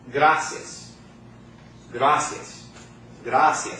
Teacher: the I and the A are combined into one sound. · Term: diphthong